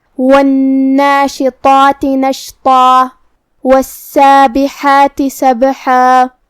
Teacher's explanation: لیکن ہم یہ آیت کو اگلی آیت کے ساتھ ملا کے پڑھے تو یہاں حکم ہوگا ادغام بغنہ، تو ہم تنوین کو واو میں ملا کے غنہ اور تشدید کے ساتھ ادا کریں گے · کلمت نشطا میں یہاں بھی ہم طا کو موٹی آواز میں ادا کریں گے اور مد الف کو بھی · کلمت والسابحات میں یہاں بھی ہمیں حرف السین کو 2 حرف کے برابر ادا کرنا ہے کیونکہ اس پہ تشدید ہے. حرف الحا کو ہم حلق کے درمیان والے حصے سے ادا کریں گے. کلمت سبحہ میں یہاں با پہ جزم ہے تو یہاں با کا حکم ہوا قلقلہ.